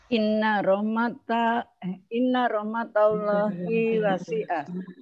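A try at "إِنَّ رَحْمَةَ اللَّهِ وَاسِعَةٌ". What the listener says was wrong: Coba panjang pendeknya ditegesin dikit.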